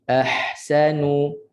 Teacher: Ha pedaskan bunyi pedas dan panjangkan bunyi itu. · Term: ha mati